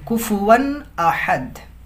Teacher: یہاں پہ حروف حلقی حمزہ ہے، حمزہ سے پہلے جو ہے واو پر تنوین ہے تو یہ ظاہر کریں گے، اظہار کریں گے.